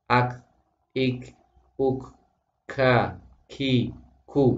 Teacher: tidak boleh mengucapkan huruf kaf dengan hames yang berlebihan. Hames itu artinya mendesis atau ada aliran nafas.